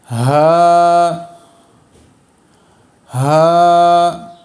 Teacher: ये वाला जो हा है ये हलक का जो सबसे नीचे वाला हिस्सा है वहाँ से अदा होता है